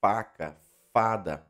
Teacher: Sons que nós vamos ter o lábio encostando no dente, igual F, faca, fada, beleza?